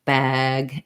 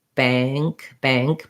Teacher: It is the same vowel, bag and bank, but you can hear how the ah in bag is more open and bank is more, maybe a little more closed and definitely a little more nasalized. You don't have to do that intentionally.